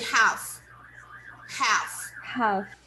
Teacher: we don't really pronounce the L. The L is silent, so we say half.